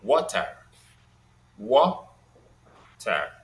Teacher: For example, there are two syllables in water, water, Ah, and in the word water, the first syllable is stressed